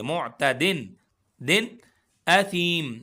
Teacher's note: معتدن، دن، اثیم، معتدن ایسے غنہ یا دن اخفا نہیں کریں گے، کیونکہ یہاں پر اظہار ہے، آگے حروف حلقی میں سے حمزہ آ گیا ہے تو اظہار کر کے پڑھیں گے